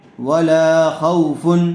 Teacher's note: واو ساکن سے پہلے زبر آیا ہوا ہے، اس لیے لین کا قاعدہ ہوگا، اس کو نرم آواز کے ساتھ جلدی ادا کریں گے